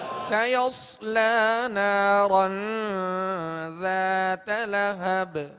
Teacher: سیصلا میں سین کو باریک پڑھیں گے مگر سیٹی کی آواز میں. آگے صاد حروف مستعلیہ میں سے پر کریں گے مگر سیٹی کی آواز میں.